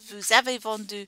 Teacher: we do say the s like a z because it's before a vowel